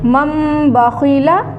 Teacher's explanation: میم کو میم سے ملا دیں گے, نون کی آواز کو ختم کر دیں گے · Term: اقلاب